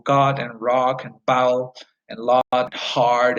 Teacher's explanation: low back tense unrounded ah sound